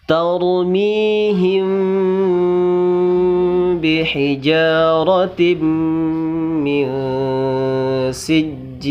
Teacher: Tarmihim. Nah, di sana ada mim sukun ke depannya bertemu dengan huruf ba, maka wajib didengungkan dan wajib ditahan. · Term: ikhfa syafawi